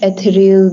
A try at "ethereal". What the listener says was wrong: I would say ethereal. Eth- ethereal. You see, that TH has to get in there.